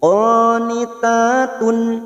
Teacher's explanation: fathah berdiri dua harakat kita panjangkan